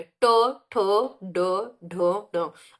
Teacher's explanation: तो आपकी जो जीभ है वो पलट के कहाँ लग रही है, मूर्धा में। यानी ये मूर्धन्य व्यंजन हो गए, ट, ठ, ड, ढ, ढ।